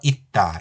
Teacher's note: 있다에는 쌍시옷이지만 이 경우는 디귿 대표음으로 소리나서 있다 이렇게 되죠